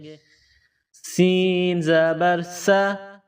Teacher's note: سین کو باریک پڑھیں گے، سیٹی کی آواز پیدا کریں گے۔